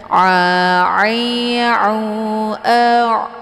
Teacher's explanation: ain letak posisinya di tenggorokan bagian tengah